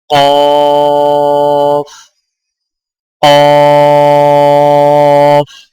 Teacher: قاف کی ادائیگی میں زبان کی جڑ کو کوے کے متصل تالو پر لگا کر موٹی آواز میں پڑھیں، یعنی قاف قاف۔